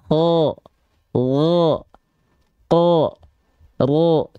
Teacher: dia dibaca dengan vokal o condong ke vokal o gitu ya kalau dia huruf yang tebal maka dia condong ke vokal o